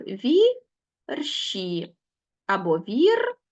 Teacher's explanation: у слові вірші наголос на перший склад Так ми ставимо і бачимо що в пом'якшений ш пом'якшений адже